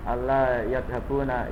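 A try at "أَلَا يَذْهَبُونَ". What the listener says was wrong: Ini tidak distasid ya Mas? Ala yadhabuna ilal hindi. Ya, ini tidak ditasdid ya. Ala yadhabuna.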